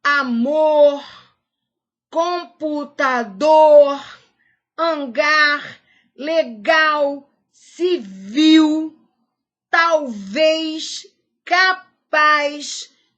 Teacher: todas essas palavras a sílaba tônica é a última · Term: oxítona